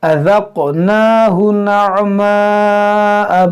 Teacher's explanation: بعد حمزہ اسی کلمے میں ہے۔ یہاں پر دیکھیں ذال اذق، یہ قاف میں قلقلہ کریں گے اور نون کو کھینچیں گے ایک الف کے برابر،